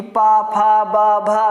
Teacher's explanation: ओष्ठ से जैसे हमें पा बोलना है तो बिना दोनों ओंठ जोड़कर हम पा नहीं बोल सकते हैं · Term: पा वर्ग